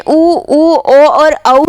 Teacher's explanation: वृत्ताकार वर्ण में किस में होठ जो है वृत्त के समान खुलते हैं